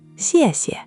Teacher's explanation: The first syllable, xiè, is tone four, the falling tone, sharp, like you're giving a firm command. The second, xie, is neutral, light and quick, no tone at all.